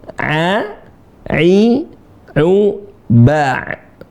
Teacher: Ain dibaca dengan suara yang dalam kalau bahasa saya, ya. Sebenarnya dia keluar di tenggorokan tengah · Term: huruf ain